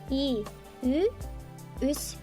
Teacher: Чтобы произнести надо сказать и, затем вытянуть губы